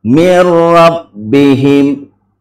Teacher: Jadi nun mati berjumpa dengan huruf ra, dia langsung menjadi tidak dileburkan atau tidak digunnahkan. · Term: idgham bila gunnah